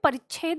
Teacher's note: जब हम परिच्छेद बोलते हैं तो च हमें बहुत कम सा सुनाई देता है